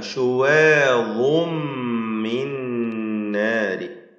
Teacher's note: ഇദ്ഗാം ബിഗുന്ന നൽകി മണിച്ചുകൊണ്ട് ഉച്ചരിക്കുക, ലയിപ്പിച്ചുകൊണ്ട് മണിക്കുക. അതിൽ ശുവാദും മിൻ മിൻ നാരി, ഈ രണ്ട് ഇദ്ഗാമും പൂർണ്ണമാണ്, ഇദ്ഗാം കാമിൽ.